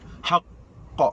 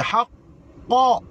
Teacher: Apabila qaf berbaris, qaf ada syaddah, tuan-tuan sedang, qaf adalah huruf qalqalah, qaf ada syaddah, maka hendaklah qalqalah dia tu qalqalah kubra, panggil qalqalah kubra, maka haqq. Nak pi pada qa tu lama sikit. Haqq, bukannya haqqa, bukan macam tu.